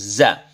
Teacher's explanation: Sofir ini maknanya mendesis. Artinya, ketika za kita ucapkan, ada suara mendesis yang hadir dari mulut kita